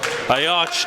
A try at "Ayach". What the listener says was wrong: And just a heads up on Ayach's last name. That CH is Ayach. Pronounce it like a K.